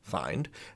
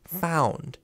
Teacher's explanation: It goes from i-ee to ow.